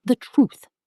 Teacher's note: The 'the' almost disappears. You just hear truth clearly.